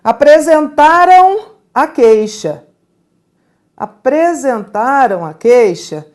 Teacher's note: é um som nasal é um ditongo nasal